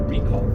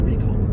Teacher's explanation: the accent is on the first syllable of recall